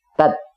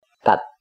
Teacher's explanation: Bila ada tasdid pada huruf ta, maka saat kode vokalnya, saat fathahnya diketuk, terbentuk suku kata tertutup berakhiran T.